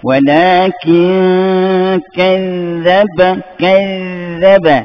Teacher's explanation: Sebab dia zad tu huruf rahwa, maka kita lepaskan dia.